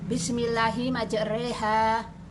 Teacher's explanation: Imalah yaitu fathah dibaca pertengahan antara fathah dan kasroh, bunyinya Bismillahi majreha, yang terdapat di surat Hud ayat 41.